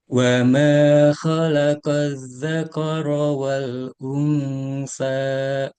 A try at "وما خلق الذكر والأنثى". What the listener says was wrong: Nah, masih ada ini. Apa namanya? Hamzahnya di belakang itu. mungkin kebiasaan lama ya.